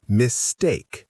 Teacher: mistake has stress on the second syllable. Mistake, not mistake.